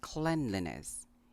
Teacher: Now this is a bit tricky since the word clean is pronounced clean, but in the word cleanliness, the first syllable is pronounced clen.